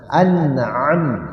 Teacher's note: Ijhar itu disempurnakan bunyi nun sukun. Nun matinya disempurnakan, dibaca dengan jelas tapi langsung masuk ke huruf selanjutnya. Dibaca jelas nun sukunnya tapi tidak ditahan. Jadi an itu harus sempurna, an huruf n.